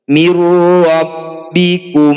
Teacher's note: Nun sukun bertemu ro disebut bacaan idgham bila gunnah. Bunyi nun sukun langsung masukkan pada ro, tidak usah dengung.